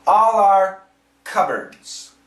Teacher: the P is silent there's no P